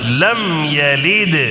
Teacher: میم ساکن کا اظہار ہوگا، ٹھیک ہے، جلدی پڑھنا ہے، غنہ وغیرہ کچھ نہیں کرنا ہے